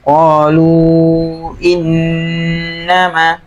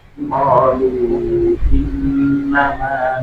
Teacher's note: coba yang pertama nun tasydidnya aja dulu ya. Nun tasydid coba ditekan agak lama